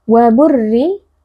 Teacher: ra dibaca tarqiq atau tipis karena di sini ra berharakat kasrah.